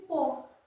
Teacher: जैसे प कहां से बोलते हैं? होठ से बोलते हैं